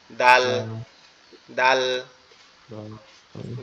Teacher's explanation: দালটা হচ্ছে আমাদের জিহ্বার আগা উপরের দাঁতের গোড়ার সঙ্গে, এই যে উপরের যে দুইটা দাঁত দেখতেছেন, এই দাঁত দুইটার গোড়ার সাথে লাগবে, লেগে একটু নরম আওয়াজ হবে